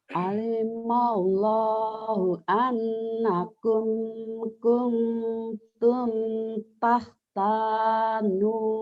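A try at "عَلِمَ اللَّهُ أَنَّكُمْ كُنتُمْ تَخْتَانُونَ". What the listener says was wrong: Nanya ketinggalan. Nanya jangan ditinggalin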